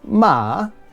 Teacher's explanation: falling rising ma that is horse